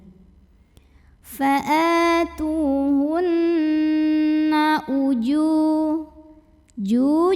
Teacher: 2 harokat saja lalu berikutnya ada hukum ghunnah karena Nun bertasydid cara membunyikannya dengung bunyi n-nya tahan sampai kerasa getarannya ke hidung